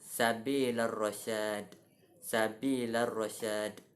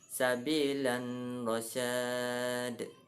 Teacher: La terus masuk ke dalam huruf ra tanpa dibaca dengan tanwin. · Jenis kesalahannya iaitu ada yang membaca sabilan rasyad. Mereka mendengungkan tanwin tersebut dan tidak memasukkan ke dalam huruf ra tersebut. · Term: idgham bila gunnah